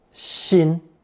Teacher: combining it with the chin phonetic and pronouncing it first tone Shin which means you as as opposed to Old there are